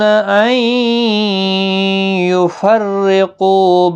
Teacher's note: نون ساکن کے بعد یرملون کا یا آیا ہے، ادغام مع الغنہ ہوگا، گنہ کے ساتھ پڑھیں گے۔ را زیر کی وجہ سے باریک پڑھا جائے گا، قو واو مدہ بھی ہے، ایک الف کی مقدار کے برابر کھینچ کر پڑھیں گے۔